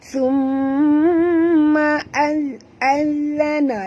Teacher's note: Okey, huruf zal ada 2, maka kita baca njut, dan huruf zal ni makhrajnya di hujung lidah. Jadi kita kena keluarkan hujung lidah kita Summa azana, lembut saja.